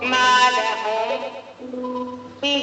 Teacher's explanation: میم ساکین کے بعد حرف با آ رہا ہے جو کہ اخفاء شفوی کا ہے تو یہاں پر میم ساکین کی آواز کو ایک الف کی مقدار چھپا کر پڑھیں گے. ناک میں چھپا کر پڑھیں گے. با کو جلد پڑھیں گے.